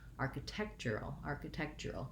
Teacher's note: It has secondary stress, but my main stress now has moved to the tech syllable, architectural. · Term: syllable stress change